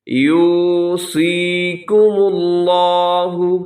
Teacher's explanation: یوسی، اسے یو سی نہیں پڑھنا آپ نے، بلکہ واو مدہ ہے، نرمی سے تھوڑا سا کھینچ کے یوصیکم اللہ۔ صاد کو آپ موٹا رکھیے گا، اگرچہ اس کے نیچے زیر ہے لیکن پھر بھی یہ حرف ہمیشہ موٹا پڑھا جائے گا · سب سے پہلے یوصیکم اللہ، یہاں پہ شروع میں واو مدہ ہے، آپ اسے لمبا کیجیے گا۔ یوسی، اسے یو سی نہیں پڑھنا آپ نے، بلکہ واو مدہ ہے، نرمی سے تھوڑا سا کھینچ کے